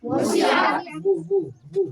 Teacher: ہونٹ گول ہوگا، پیش ادا ہوگا دباؤ کی طرح، ہونٹ گول ہوگا، ہے نا.